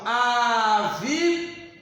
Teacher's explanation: Quando eu falo avião, eu pronunciei com maior intensidade a letra A. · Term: ditongo